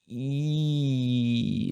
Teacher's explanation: My tongue is raised higher, specifically the front of my tongue.